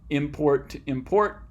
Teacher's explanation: So these last two are a little bit different because you're not changing specific sounds you're using in the middle of these words, and instead you're shifting the stress from the beginning to the end.